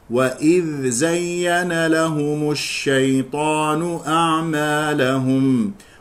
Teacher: يخطئ من يقرأ، طبعا نحن نقرأ في رواية حفص بارك الله فيكم، وإذ زين بإدغام الذال في الزاء يقول وإذ زين، وإذ زين، هذا خطأ، الصواب الإظهار